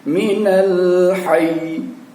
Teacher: Pada saat kita wakafkan maka bunyinya menjadi minal hayy. Yi-nya tidak kita munculkan, tapi terdengar adalah hayy